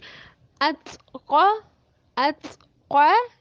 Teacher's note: تا جب ساکن حالت میں ہوگا تو آواز بند ہو جائے گی اور ایئر آؤٹ ہوگی، یعنی ات قا، ات قا، دیکھیں ات یہ ایئر آؤٹ ہو رہی ہے نا۔